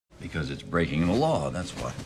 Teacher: Law has the most up-down shape. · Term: most stress